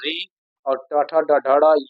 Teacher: ये मूर्धा से बोला जाता है